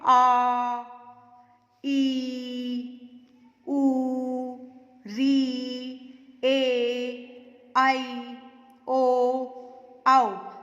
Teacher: इनको बोलने में दुगना समय लगा, इसलिए इनको बोलते हैं दीर्घ स्वर